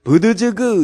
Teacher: 비읍은 입술 소리요, 디귿은 혀끝 소리요, 지읒은 경구개음이요, 기역은 연구개음인데